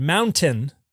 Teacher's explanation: using a glottal stop in place of a T